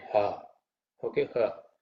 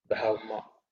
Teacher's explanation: So the ha sort of is more down in the chest.